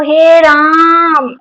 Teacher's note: प्लुत स्वर में इन दोनों का 3 गुना समय लगता है